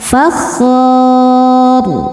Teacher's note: Dan huruf ro ketika berhenti dibaca secara tafkhim. Kenapa? Karena ro-nya disukunkan.